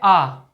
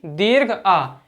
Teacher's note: इस स्वर से ज्यादा मुख किसी भी स्वर में नहीं खुलता है। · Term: विवृत स्वर